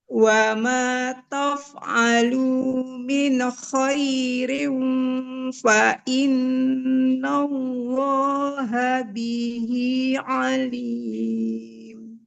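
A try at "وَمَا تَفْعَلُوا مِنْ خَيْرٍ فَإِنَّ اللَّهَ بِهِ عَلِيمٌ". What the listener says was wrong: Ya, boleh diulang Ibu sedikit. Ini ya. Wa ma taf'alu min. Nah, nun sukunnya jangan memantul. Wa ma taf'alu min khairin fa innallaha bihi alim.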